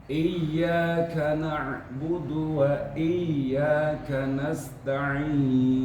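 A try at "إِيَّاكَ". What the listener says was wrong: huruf K desisnya kecil saja Pak. Iyyaka, jangan iyyaka kana, itu terlalu deras. Iyyaka na'budu wa iyyaka biasa aja ka.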